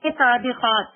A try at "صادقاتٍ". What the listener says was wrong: صادقات پھر ہو گیا. صادقاتن پورا بولنا پڑے گا. صادقاتن.